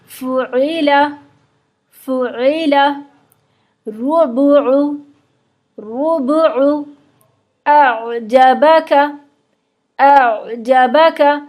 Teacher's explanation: عین کو بالکل وسط حلق سے نکالیں گے، درمیان حلق سے، آواز تھوڑی سی رگڑ کے نکلے گی اور نرمی کے ساتھ نکلے گی